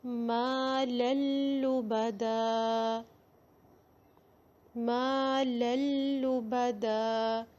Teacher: نون کی جو ساؤنڈ ہے، تنوین کی ساؤنڈ ہے، وہ بالکل ختم ہو جائے گی